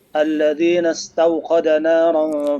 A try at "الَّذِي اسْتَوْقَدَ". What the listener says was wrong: Bukan alladzina, itu alladzi istawqada. Enggak ada na di situ ya.